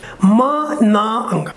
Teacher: the soft palate is lowered, which allows the airflow to pass through the nasal cavity. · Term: nasal sound